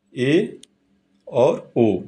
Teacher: जिन स्वरों के उच्चारण में मुख द्वार आधा बंद रहता है, इन्हें अर्ध समृद्ध कहते हैं। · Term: अर्ध समृत